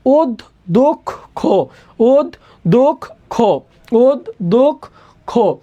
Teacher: এখন দেখো আমরা অধ্যক্ষ বলে থাইমা যায় না, অধ্যক্ষ বলি, তাহলে শব্দের শেষে একটা অয়ের উচ্চারণ আছে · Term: ওকার